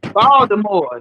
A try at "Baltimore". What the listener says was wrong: They don't say Baltimore. They don't pronounce. Ain't no T. It's like a D up in that joint. Baltimore. Baltimore. Baltimore.